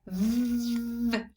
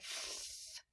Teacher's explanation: v and f, same articulation, but voice on and off